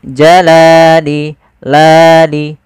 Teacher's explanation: Panjangnya adalah dua harakat. Yaitu kita memanjangkan lamnya. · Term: mad thabi'i